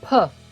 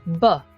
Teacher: puff is voiceless bilabial stop sound while buck is voiced bilabial stop sound